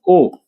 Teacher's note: कंठ आणि ओटातून बाहेर येत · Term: कंठोष्टी